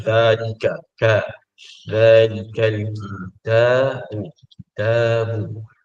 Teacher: Sebutan dza tu secara tarqiq rendah saja dalam nada yang rendah